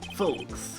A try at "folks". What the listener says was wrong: The L is silent. In folks. You don't say the L. You said folks.